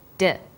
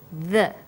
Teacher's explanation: When you articulate d, you can feel your tongue against your tooth ridge, like this, d. And when you say the, your tongue is between your top and bottom teeth, like this, the.